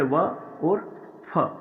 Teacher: इसमें नीचे वाला होठ का स्पर्श यानी ऊपर वाले दांतों से होता है। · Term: दंतोष्ठ